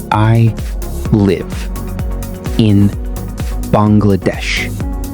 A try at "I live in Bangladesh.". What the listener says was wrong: The word live, say it like this. L-I-V. Live. Not leave. Live. Try again, baby.